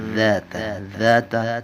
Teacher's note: ادا کرتے ہوئے زبان ثنایا علیہ کی نوک سے لگے گی، یعنی سامنے والے جو اوپر والے آپ کے دو دانت ہیں وہاں لگے گی زبان